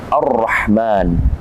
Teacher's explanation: Kemudian ada Ar-Rahman, alif lam bertemu dengan ra, ra-nya bertasydid, maka alif lam ini disebut dengan alif lam yang tidak dibaca atau alif lam syamsiyah. Ar-Rahman, jadi tidak dibaca alif lam, langsung dia masuk kepada huruf ra.